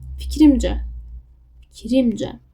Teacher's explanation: Burada i-yə, yəni ikinci hecaya düşür.